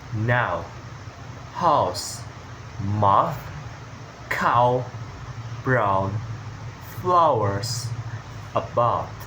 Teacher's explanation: So your mouth start open and then become smaller and rounder. · This sound begins with an open A sound, A like a cat, A like cat, and moves to the rounded O sounds like book. So your mouth starts open and then becomes smaller and rounder. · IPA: /aʊ/, aʊ